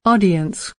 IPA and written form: ˈɑː.di.əns (Audience)